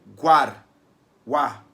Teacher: em guar, o A é mais forte, o U é um som mais fraco. Eu digo que o U é a semivogal, o A é a vogal. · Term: ditongo crescente